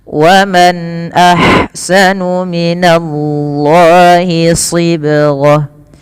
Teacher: Izhar artinya jelas, halqi berarti dari huruf-huruf yang keluar dari tenggorokan, yang dimana nun matinya bertemu dengan hamzah, maka harus dibaca dengan jelas. Kemudian alirkan nafas ketika melafalkan ha. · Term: izhar halqi